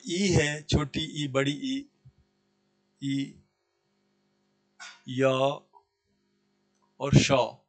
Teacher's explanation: इन सारे वर्णों का उच्चारण स्थान तालु है।